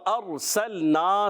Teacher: सीन को सीटी के साथ अदा करेंगे, सीन को लाम से मिलाएंगे, लाम को हिलाएंगे नहीं। · नून अलिफ ज़बर ना, अलिफ मद्दा एक अलिफ खींच कर अदा करेंगे